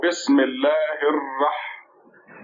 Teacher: SHADDAH and then a FAT-HA on it. This makes stress on the letter Ra